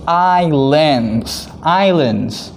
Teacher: okay now first one over here we say i land so the s is silent we don't say the s